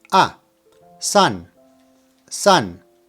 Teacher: make sure that you don't pronounce san like sand from the word sand or like sun. Open the A up a bit. You know, like when you go to the doctor and she asks you to open your mouth while she checks your throat.